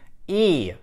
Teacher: передняя его часть поднимается высокого подъёма говорят то есть High T губы у нас растянуты при этом не округлены это очень важно и язык очень высоко